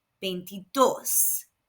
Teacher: Again, the V is pronounced B and the I's are pronounced E, and there is an accent on the O, so the stress is where the accent is, on the last syllable